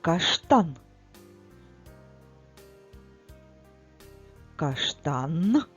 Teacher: останній звук в слові каштан твердий приголосний звук